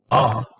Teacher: Ah, now watch, Yes, the lips move, the jaw goes down, but it's not rounded. So is low, back, tense, unrounded.